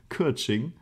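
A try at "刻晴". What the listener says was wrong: Ke. Ke. It's like an sound at the back of your throat instead of e. Ke. Keqing. CH sound for the Q. Chi ying. Qing. Keqing.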